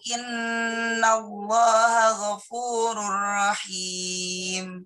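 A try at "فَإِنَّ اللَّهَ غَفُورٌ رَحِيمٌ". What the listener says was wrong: Tinggal ditambahi fa aja. Fa innallaha.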